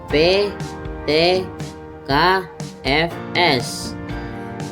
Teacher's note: ini pita suara tidak bergetar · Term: tak bersuara